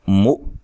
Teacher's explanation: مو حمزہ کو جھٹکے سے ادا کریں گے